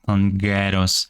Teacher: the N assimilates with the K